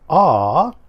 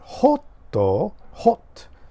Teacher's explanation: the short vowel sound for o which is aa and I used the example of the word hot h OT